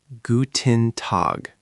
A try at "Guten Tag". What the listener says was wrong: Nice start. 2 tweaks. German U is a bit more like oo